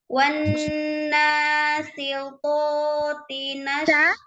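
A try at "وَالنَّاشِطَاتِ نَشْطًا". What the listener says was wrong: Huruf apa? Bukan sin ya, tapi shin, tengah lidah. Tengah lidahnya naik ke langit-langit. Sha, shi, shu. Jangan ujung lidah, ya. Wan nasyitati nashta.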